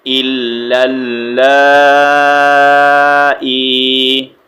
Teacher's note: یہاں پر کون سا یا مدہ ہے تو اس کو بھی ہم نے ایک سیکنڈ کے لیے اسٹریچ کر کے پڑھنا ہے